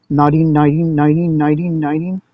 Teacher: I want to do a D. It's easier because we can do D's quicker. We can do a really quick tap.